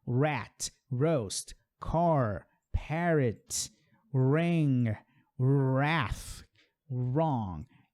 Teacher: O som do R em inglês é importante a gente perceber, porque é o R enrolado.